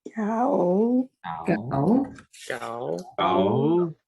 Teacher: We've got our number 9, which is our mid-rising gao.